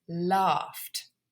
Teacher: Even though it's spelt GH, it is still an unvoiced consonant sound, so it's laughed. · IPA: /lɑːft/